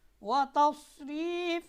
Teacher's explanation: سین اور صاد میں سیٹی بجے گی، لیکن صاد میں آواز موٹی ہے، موٹی کرنی ہے آپ نے۔ · صاد ہمیشہ موٹا پڑا جائے گا، اس کا مخرج یہ ہے کہ زبان کی نوک کو ثنایا سفلیہ یعنی نیچے والے جو دو دانت ہیں ان کو کہتے ہیں ثنایا سفلیہ، اس کے کنارے پر زبان لگے گی، اور جو ثنایا علیہ ہے سامنے والے جو دو دانت ہیں ان کے ساتھ لگ کر حرف صاد ادا ہوتا ہے۔